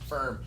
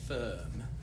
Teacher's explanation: this hard R sound is uniquely American.